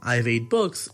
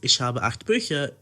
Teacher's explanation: German's habit of placing glottal stops in between words give it a more choppy vibe in contrast to many other major languages like English or French, which supposedly have a more flowy tone.